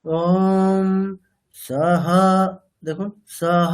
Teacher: স মানে নিচের দিকে বলতে হবে, কণ্ঠের পিছন দিক দিয়ে। আর উদাত্ত হলে আমি সামনের দিক দিয়ে বলতাম। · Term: অনুদাত্ত